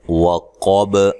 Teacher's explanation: قاف کو موٹا ادا کرنا ہے، با پہ قلقلہ کرنا ہے وقف کی صورت میں واضح